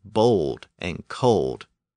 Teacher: the sound at the end of words like bold and cold when a short vowel appeared before this LD sound it tended to become long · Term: long vowel sound